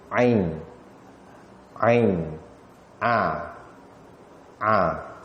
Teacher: Kalau kita sebut ain, kita akan rasa kita punya suara tu keluar dekat halqum. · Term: huruf ain